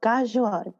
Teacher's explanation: You take the back of your tongue, press it at the roof of your mouth, and do the g sound. So it's almost like a G, like a g and a k mix.